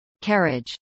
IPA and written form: ˈkæɹɪdʒ (carriage)